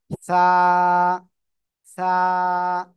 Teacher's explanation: কোথায় লাগাবো? জিহ্বার আগা, সামনের উপরে দুই দাঁতের আগার সাথে লাগাবো। লাগিয়ে হালকা বাতাস বের করব, বের করে আমরা উচ্চারণ করব।